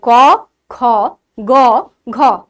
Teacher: কতে অল্প শ্বাস বায়ু লাগছে, খতে বেশি লাগছে, গতে অল্প লাগছে, ঘতে বেশি লাগছে। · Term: মহাপ্রাণ ধ্বনি